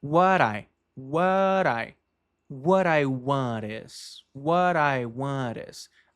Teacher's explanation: Quando uma palavra termina em inglês, quando uma palavra termina com a consoante T ou D e a próxima palavra é uma vogal, esse T se junta com o I, faz uma ligação e produz o som, como a gente chama de flap